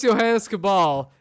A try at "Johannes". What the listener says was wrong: long A sound on the last name. Why wouldn't you do it on the first name, too?